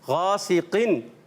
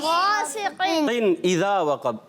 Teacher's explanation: غا حرف مدہ ایک الف کھینچ کے پڑھیں